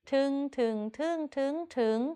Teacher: จัตวา ถึงก็เช่นกันไม่มีรูปวรรณยุกต์เลยและเป็นคำเป็นด้วยเสียงของมันก็คือจัตวา